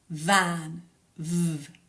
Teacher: sound V van v you can feel a a vibration or a kind of buzz in your throat when you say V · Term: voiced consonants